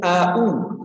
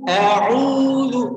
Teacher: Langsung AU, kadang ada AU, ada yang membaca hamzah 2 kali AU, padahal hamzahnya di awal dan di huruf keduanya adalah huruf ain, ada di tenggorokan yaitu huruf khalaqi. Maka a'udzu, dan u-nya itu panjangnya 2 harokat.